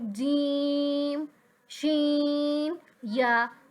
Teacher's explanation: जीम शी या ये इस तरह के हरूफ है जिनका मखरज अक्सर लोग सही अदा करते हैं। ये जुबान के दरमियान बिल्कुल जो जुबान का दरमियान है और उसके बिल्कुल ऊपर तालुका दरमियान वहां से अदा होता है। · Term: हरूफ शजरिया